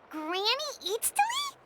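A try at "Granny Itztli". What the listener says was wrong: Yes, Granny Eatstly. but emphasis on Eatsley, not Granny.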